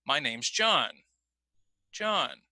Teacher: my voice rises and falls on that name and that's because John is the focus word the focus word is telling me what's the most important thing